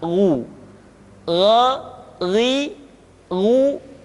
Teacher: Perhatikan posisi mulut kita ketika mengucapkan dalam keadaan fathah, tidak dimonyongkan wo, tapi terbuka gha, ri, ru. Ketika dhammah baru bibir kita dimonyongkan sehingga keluar vokal u dengan sempurna